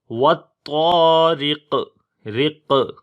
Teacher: را کو باریک پڑھیں گے، اس کے نیچے زیر ہے، قاف کو موٹا پڑھیں گے اور یہاں پر قلقلہ بھی کریں گے جب رکیں گے، کیونکہ جب رکیں گے تو قاف کے نیچے جو زیر ہے وہ ختم ہو جاتی ہے اور اس کے اوپر جزم آ جاتی ہے، تو اس وجہ سے یہاں پر پھر قلقلہ ہوگا، یعنی کہ آواز کے اندر جنبش آئے گی تو آواز آئے گی والطارق، رق۔